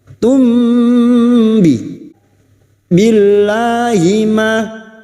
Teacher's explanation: namun kali ini bertemu dengan ba Ikhfa Syafawi mim sukun mendengung selama tiga harakat · Asyrak, kaf sukun yang memiliki sifat syiddah dan hamas. Tum, mim sukun bertemu ba, biasanya mim sukun dibaca jelas, namun kali ini bertemu dengan ba, ikfa safawi, mim sukun mendengung selama 3 harokat